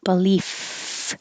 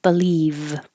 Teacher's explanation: the F is voiceless, just air, belief. And the V has sound